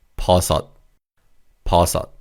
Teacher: The 시옷 받침 in the second syllable is pronounced as like a T sound.